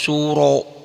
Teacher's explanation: Karena rnya barisnya di atas ro suro ro ya. Jangan suratun, jangan ra. Bunyinya bunyi o. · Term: Tafkhim tebal